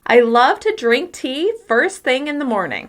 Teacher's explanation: I'm stressing love, drink tea first thing morning.